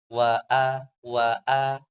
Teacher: ada penekanan atau pita suaranya paling enggak menyempit untuk menyebutkan huruf hamzah